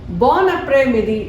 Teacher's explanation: N is a consonant, whereas A is a vowel. So it is linked.